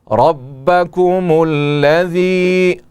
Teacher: را کے اوپر زبر ہے اور را کو پر پڑھیں گے.